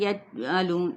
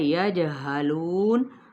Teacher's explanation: جیم پہ کلکلا ہے، اس کو ہلانا ہے ، یجہلون، لو پہ واو مدہ، نون پہ ساکن کیا تو